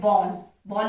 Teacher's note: और ये जो अर्धचंद्र है, ध्यान दोगे, ये हमेशा इंग्लिश वर्ड्स में ही लगते हैं और इनका प्रोनाउंसिएशन आ और औ के बीच की होती है